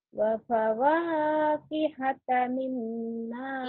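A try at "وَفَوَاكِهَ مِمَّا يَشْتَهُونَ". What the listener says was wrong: Kiha, enggak ada ta, itu kiha, enggak ada ta.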